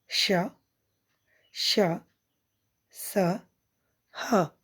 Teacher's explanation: ऊष्म व्यंजन बच्चों, ऊष्म का अर्थ होता है गर्म। इन वर्णों के उच्चारण के समय हवा के रगड़ खाने से मुख में गर्मी ऊष्मा उत्पन्न होती है, अतः इन्हें ऊष्म व्यंजन कहा जाता है।